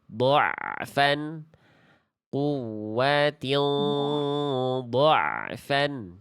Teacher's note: Pertengahan suaranya antara mengalir dan tertahan. Jadi dia sedikit mengalir ya. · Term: ain sukun